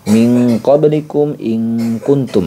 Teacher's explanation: bunyi nunnya sudah lari ke Ang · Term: Ikfa abad